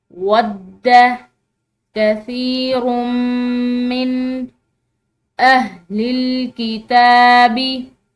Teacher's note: रॉ की तनवीन के बाद मीम आ रही है, तो यहाँ पर हमने जो है इसको इदगाम बिलगुन्ना या इदगाम नाक़िस करना है